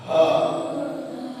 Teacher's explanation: Makhrajnya itu di dada, sehingga kalau ucap ha di sini bergetar.